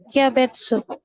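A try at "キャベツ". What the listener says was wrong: Oke, ya. Itu dibacanya kia.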